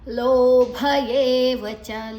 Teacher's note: ಲೋಭ ಲೋ ದೀರ್ಘ ಭ ಮಹಾಪ್ರಾಣ ಏವ ಚ ಏ ದೀರ್ಘ.